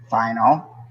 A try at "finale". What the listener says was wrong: Okay, now add the E. It's finale. And you're calling it wrong.